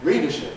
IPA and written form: ˈriːdəʃɪp (readership)